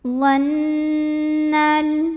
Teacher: Nunnya adalah gunnah musyaddadah karena nunnya bertasydid. Maka cara bacanya didengungkan. Jadi bunyi n-nya tahan sampai ada getaran ke hidung. Dhannal. Alif lamnya namanya alif lam qamariyah karena alif lamnya ketemu sama huruf qamariyah yaitu jim.